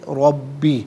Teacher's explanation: ربی میں را پر زبر ہے، را کو پر کر کے پڑھیں گے، با مشدد ہے، اسے جماع کے ساتھ پڑھیں گے۔